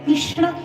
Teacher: मूर्धन्य श लागलेला आहे आणि पुढे ण आहे या दोनचाही जे की मूर्धा स्थानीय वर्ण आहेत